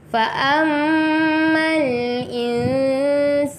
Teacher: Nun mati bertemu huruf sin, ikhfa hakiki, cara bacaannya tidak jelas ataupun samar-samar